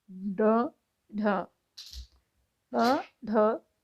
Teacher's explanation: उत्क्षिप्त, जिनके उच्चारण में जीभ ऊपर उठकर झटके के साथ नीचे को आए